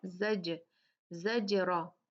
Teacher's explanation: تو اس لیے ہم جو ہے جب بھی یہ قطب جدن میں سے آتے ہیں، یہاں پر جیم آیا ہے قطب جدن، تو جیم پہ قلقلہ ہوگا. جب بھی یہ حروف ساکن ہوتے ہیں یا ان کو رک کے ساکن کیا جاتا ہے تو اس کو ہلا کے پڑھا جاتا ہے، تھوڑا جھٹکے سے پڑھا جاتا ہے